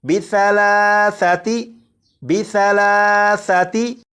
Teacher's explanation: سا کو نرمی سے پڑھنا ہے، یعنی سی ٹی کی آواز کے بغیر پڑھنا ہے